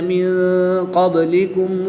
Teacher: نون ساکن کے بعد قاف حروف اخفا میں سے ہے تو یہاں پر اخفا کر کے پڑھیں گے، یعنی غنہ زمانی کر کے پڑھیں گے